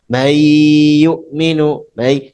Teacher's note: antum harus pakai pengaruh khasyum yaitu suara rongga hidung